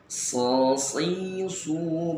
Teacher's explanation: adanya tambahan nafas yang berdesis pada huruf so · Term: as-sofiru